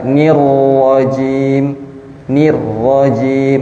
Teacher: tipisnya huruf nun karena dia kasrah